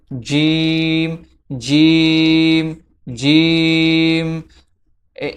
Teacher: জিমের মাখরাজ হচ্ছে জিহ্বার মধ্যখান তার বরাবর উপরের তালুর সঙ্গে লাগিয়ে উচ্চারিত হয়। জিহ্বার মধ্যখান, ঠিক আছে, তার বরাবর উপরের তালুর সঙ্গে লেগে জিম উচ্চারিত হয়।